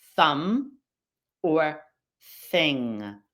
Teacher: Other examples of the TH in words that don't have vibrating vocal cords would be thumb or thing. You're just flowing air through the tongue and teeth.